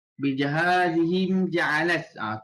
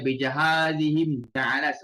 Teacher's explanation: Izhar Okey, dia baca izhar izhar syafawi di mana kita baca tanpa dengung